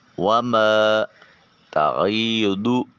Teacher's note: وما تغیدو الف خالی از حرکت ما قبل میم کے اوپر زبر، اس کو ایک الف کے قیم مقام لمبا کریں گے۔ وما تغیدو ضاد حرف مستعلیہ ہے، موٹا اور پر کر کے ادا کیا جائے گا